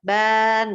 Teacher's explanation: Bukan n-nya yang panjang, ba-nya yang panjang.